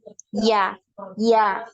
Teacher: Sedangkan ya tidak punya aliran nafas tapi punya aliran suara ya. Ya, ya. Coba saja Antuna buktikan, diletakkan tangannya di depan mulut ya, kemudian ucapkan sebutkan huruf iya. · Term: huruf ya